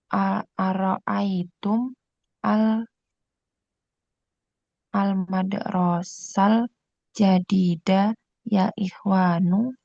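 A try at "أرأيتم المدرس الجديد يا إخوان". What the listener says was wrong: Bukan madrasal ya. Mudarrisa.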